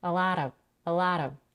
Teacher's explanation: The F in of is voiced, and it sounds like V. She also reduces the vowel to a schwa, and off becomes of. · The last sound in a lot is a flap T. She links a lot with the next word of, and because the T or the T is now between two vowels, she can flap it. It sounds like a very quick R or D.